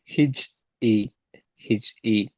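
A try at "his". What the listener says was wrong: பாத்தீங்கன்னா ஹிச் இச் சவுண்ட் வரையில அது. ஜெட் சவுண்ட் வரணும். ஹிஸ் ஹிஸ். ஜெட் இஸ்.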